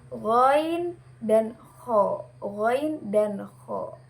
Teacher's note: adnal halq atau pangkal tenggorokan